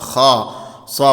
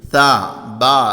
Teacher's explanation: നാവിന്റെ മുരട് അണ്ണാക്കിലേക്ക് ഉയരാതെ തർക്കീക്കായാണ് ഉച്ചരിക്കേണ്ടത് എന്ന് പറഞ്ഞാൽ തർക്കീക്കായി ഉച്ചരിക്കുക എന്ന് പറഞ്ഞാൽ നേർപ്പിച്ച് ഉച്ചരിക്കുക അണ്ണാക്കിലേക്ക് നാവിന്റെ മുരട്